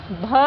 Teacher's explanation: हिंदी की स्पर्श घोष महाप्राण ओष्ठ व्यंजन ध्वनि है